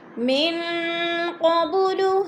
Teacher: نون ساکن کے بعد قوف آ گیا تو ادھر اخفا ہو رہا ہے، آواز کو ناک میں چھپا کر پڑھیں گے